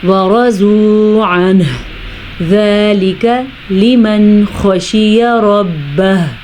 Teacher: را کو پر پڑھیں گے اور ہا کا مخرج اپنی جگہ سے نکالیں گے